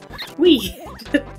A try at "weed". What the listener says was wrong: Yeah, I heard the D.